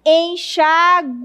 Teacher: A gente pronuncia esse E como se fosse nasal.